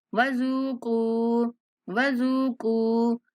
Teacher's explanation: زال کو نرمی سے پڑھتے ہوئے کھینچیں گے اور کاف کو بھی 1 سیکنڈ تک لمبا کریں گے